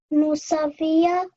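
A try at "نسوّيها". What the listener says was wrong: Okay, the vowel, you said it correctly, just the vowel has this shadda sign on top of it. This shadda sign. So what does this mean? What must you do to the vowel? Push it. Okay, I must stress it. Yeah, so when you join the scene with the vowel, you have to stress it.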